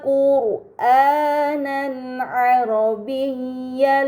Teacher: terdapat harokat fathah tain bertemu dengan huruf ain, ini dinamakan izhar halqi, maka fathah tain dibaca secara jelas